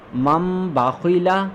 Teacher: नून साकिन के बाद बा आ गया तो इसको हम लोगों ने तब्दील कर दिया है मीम में, तो हम इसे पढ़ेंगे मीम बादी। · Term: इक़लाब